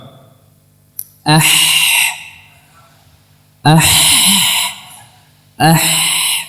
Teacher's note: Adapun huruf Ha dia hanya mendekat saja tidak sampai merapat